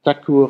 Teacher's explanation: Also noch mehr palatalisieren, die Zunge ganz unter den Gaumen schieben.